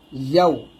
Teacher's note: ইয়ার উচ্চারণটা একটু ঠিক করবেন, যেন জিহ্বার মধ্যখান উপরে তালুর সঙ্গে লাগে